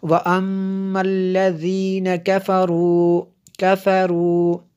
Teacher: یہاں پہ میم شدد ہے اس لیے یہاں پہ غنہ ہوا